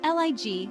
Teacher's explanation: pronounced Elegy with stress on the first syllable.